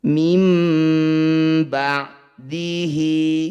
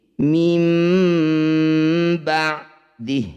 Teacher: Saat berhenti, huruf terakhir 'ha', yang aktif dan berbunyi seperti 'hi', menjadi 'sakin' (mati) karena kita telah berhenti.